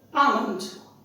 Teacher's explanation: L is silent, and this is not A.